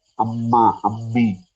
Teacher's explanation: രണ്ടു ചുണ്ടും ശരിക്ക് ചേർത്ത് വെക്കുമ്പോഴാണ് മന്റെ ഉച്ചാരണം വരുന്നത്